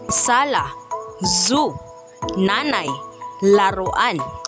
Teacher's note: sa punong gilagid ang ibabaw ng punong dila